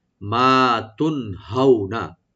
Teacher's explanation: হাউ এখানে আমরা হারফে লিন, লিন করব, একটু সফট করে পড়বো , হাউ হাটাকে রাইট দিবেন, নুনে কোনো টান নাই, মা তুন